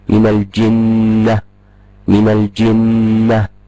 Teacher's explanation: النون هنا نون مشدده تغن بمقدار حركتين